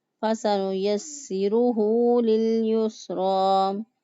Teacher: فَسَنُيَسِّرُهُ لِلْيُسْرَى سین کی ادائیگی میں سیڑھی جیسی آواز آنی چاہیے۔ زبان کی نوک جب اوپر نیچے سامنے والے دانتوں کے پوچھ سے لگے تو اس وقت سین ادا ہوتا ہے